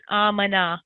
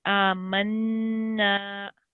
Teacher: We need to sit on it for 2 seconds, and especially with the noon mushaddid, we need to sit on it and do a nasal sound. So the sound comes from the nose. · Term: shadda